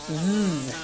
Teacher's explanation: our letter Z is voiced. It's similar to an S, but with some vibration. Kind of like a bumblebee.